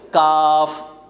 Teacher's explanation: کاف ذرا منہ کی جانب ہٹ کر آگے کی طرف آ کر ادا کریں گے